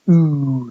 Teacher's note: right at the back but very high uh in a close position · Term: O vowel